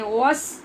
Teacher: وس ہونٹ گول کریں اور سین کو آگے باریک پڑھیں